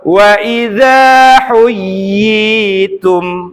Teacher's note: Atau wa idza huyyitum. Jadi tekan tasdid iya-nya, lepaskan iya-nya benar-benar dari makhrajnya, berharokat kasrah, dipanjangkan 2 harokat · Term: mad tamkin